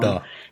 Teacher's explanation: So you're not saying, when you say, like, if I say dog, normally my tongue is closer to my teeth, but the D sound in Klingon is further back, so it's more like duh, like a duh sound.